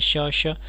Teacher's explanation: जिन व्यंजनों के उच्चारण में श्वास रगड़ खाकर निकलती है और रगड़ के कारण श्वास में कुछ ऊष्मा उत्पन्न होती है, वह ऊष्म व्यंजन कहलाते हैं।